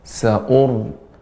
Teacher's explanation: Di sini ada ra yang dibaca dengan tebal pada ayat ke-17, sa'ur, tanpa memonyongkan bibir yang ketika ra-nya yang dibaca tebal